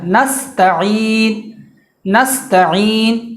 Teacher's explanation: نستعین میں دھیان رکھنا ہے کہ سین کے بعد جو حرف ہے وہ تا ہے، اور تا جو ہے وہ بالکل باریک ادا ہوتا ہے، تو یہ موٹا نہیں ہونے پایا